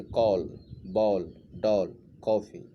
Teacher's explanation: आगत ध्वनियाँ औ, इस ध्वनि का प्रयोग केवल अंग्रेजी के शब्दों में किया जाता है। इसका उच्चारण आ और ओ के बीच का है